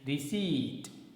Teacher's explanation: Here the sound p is silent.